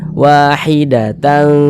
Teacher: Nah, maka bunyi tanwinnya karena dia ini bertemu dengan huruf ikhfa ya, maka disamarkan bunyi tanwinnya, disamarkan kemudian didengungkan. Jangan dibaca wahidatan tan sempurna, bunyi n-nya sempurna, jangan, tapi disamarkan.